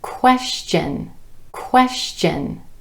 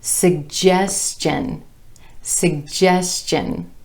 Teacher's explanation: You will sometimes hear the TION ending pronounced chun, chun, with the CH sound.